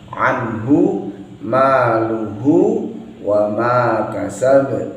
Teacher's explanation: Ain ditekan, anhu maluhu wa ma kasab. Harus ada qalqalahnya, harus ada pantulannya.